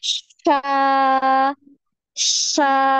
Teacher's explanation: Nah, Sha, sha, shi, shu. fathahnya juga dihilangkan y-nya, jangan ada y ya. Sha, sha, gitu.